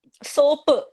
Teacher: സ ഒരു high frequency ശബ്ദവും പ ഒരു ലോ ഫ്രീക്വൻസി ശബ്ദവുമാണ്